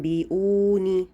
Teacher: اس پہ ہم نے 2 حرکت یعنی کہ 2 کاؤنٹس یا 1 الف کے برابر غنہ کرنا ہے